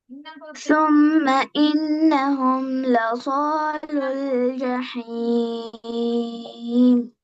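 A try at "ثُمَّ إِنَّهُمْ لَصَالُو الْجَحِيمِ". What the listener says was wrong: கொஞ்சம் போதாது. ஜஹீம் ராகம் எடுத்து ஓதுங்க. ثم إنهم لصالوا الجحيم.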